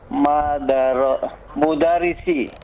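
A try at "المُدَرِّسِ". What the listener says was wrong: Al-mudarrisi, ada alif lam di situ. Al-mudarrisi, ra-nya ditasdid. Al-mudarrisi.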